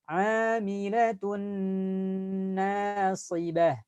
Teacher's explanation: ada tanwin bertemu dengan huruf nun, dileburkan dan tahan suara. Amilatun. Lamain dulu bunyi n-nya.